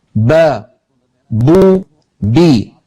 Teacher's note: با دونوں ہونٹوں سے ادا ہوتی ہے، اس طرح کہ دونوں ہونٹ آپس میں ملتے ہیں۔ زبان کو دیکھیں، جب با ادا ہوتی ہے تو زبان بالکل سکون میں ہوتی ہے۔